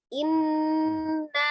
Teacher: ada nun bertasdid ya, wajib gunnah yang sempurna, ditekan, ditahan 2 sampai 3 harokat dan suaranya sebagian dimasukkan ke rongga hidung